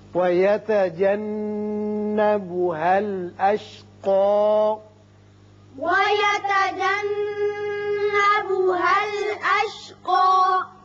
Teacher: یہاں نون مشدد ہے، غنہ کریں گے۔ اشقا اوپر کی طرف ایک الف کے برابر آواز کھینچیں گے وقت کی صورت میں، اور وصل کی صورت میں اشقى الذی ہوگا۔